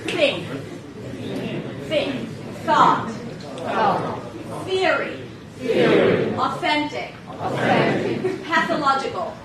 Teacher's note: So when you pronounce the TH, your tongue has to be out, okay? So the tongue comes out, and air passes between the tongue and teeth, creating this friction sound.